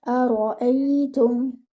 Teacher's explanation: Your ra over here should be heavy, and it should be given one count.